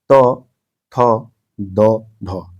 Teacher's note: जिनका उच्चारण ऊपर के दांतों पर जीभ लगाने से होता है